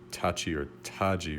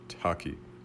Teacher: The palatalization that you hear when K precedes an I, so that is tachi or taji rather than taki, is characteristic of Faroese.